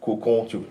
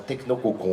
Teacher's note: le on final qui est très en fond de gorge, qui est nasalisé, c'est un O nasalisé le on en phonème, le triple martelage du O au on crée un effet de fermeture tout à fait clair, tout à fait net, que je pense que quelqu'un qui n'a jamais fait de phonétique peut ressentir.